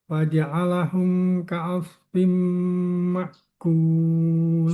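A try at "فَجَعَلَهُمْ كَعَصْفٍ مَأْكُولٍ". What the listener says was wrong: Faja'alah ka langsung diputus. Biarkan anginnya keluar.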